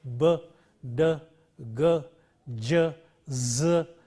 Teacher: On the other hand, we have voiced sounds, and these sounds are produced by the vibration of the vocal cords in the larynx. The vocal cords vibrate, producing a voice, and these are sounds like b, d, g, j, z, etc.